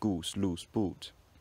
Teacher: all of these vowels are just a bit higher in the vowel space than their spellings would suggest if you were going by normal European spelling standards. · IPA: [u:]